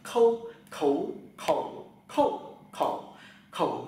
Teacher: là khẩ chữ K thì các bạn là bật hơi đấy cái k người ta gọi là âm gốc lưỡi đầu lưỡi mặt lưỡi gốc lưỡi tì gốc lưỡi xuống hàng dưới và hơi từ bụng bật ra rất mạnh